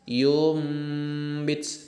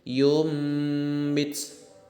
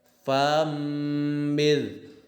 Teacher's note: tidak terdengar ada nun sama sekali di sana. Padahal tulisannya nun, tapi dibacanya mim. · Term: hukum iqlab